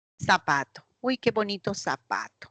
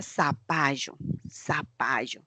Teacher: No utilizamos la interdental para pronunciar. Lo pronunciamos la Z como si fuese una S. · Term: ceseo